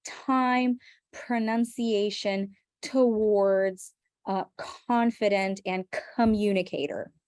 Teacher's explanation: we add air for the p, the k, and the t sounds